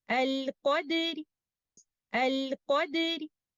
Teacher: the Ra will be recited by giving the 1/3 of the vowel length of kasra, since we are reciting it with the part of the haraka. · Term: Rawm